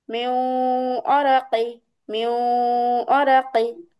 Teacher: তাহলে নুন সাকিনের পরে যদি ঈদগামে বাগুন্নার চারটা হরফ থেকে যে কোনো একটি হরফ আমরা পাই, তাহলে উক্ত নুন সাকিন ও তানবিনকে গুন্নার সাথে ঈদগাম করে পড়তে হয়, মানে গুন্নার সাথে মিলায়া পড়তে হয়, তাসদিদ দিয়ে পড়তে হয়, হ্যাঁ।